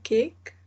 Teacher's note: the back of the tongue is pressing the soft palate